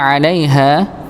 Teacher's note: harful lin di sini, maka dibaca satu harokat saja